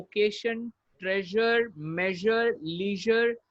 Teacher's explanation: यहाँ पे जो S का साउंड होगा वो ZH होगा